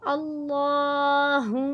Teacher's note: हा को भारी आवाज में अदा करेंगे। हा की पेश को मीम मुशद्द के साथ मिलाकर पढ़ेंगे।